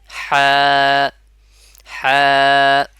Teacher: গলার মাঝখান থেকে মানে গলার ফাঁকা জায়গা থেকে উচ্চারণ হবে আর এক আলিফ পরিমাণ টান হবে কত আলিফ এক আলিফ পরিমাণ